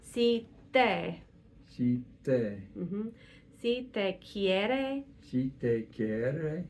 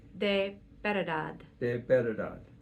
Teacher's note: I am pushing my tongue forward onto my teeth, the bottom of my upper teeth. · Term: dentalize